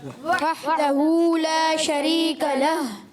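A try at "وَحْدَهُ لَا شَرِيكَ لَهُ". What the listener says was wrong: हा की अदायगी क्लियर, वहदहू ला शरीक लह,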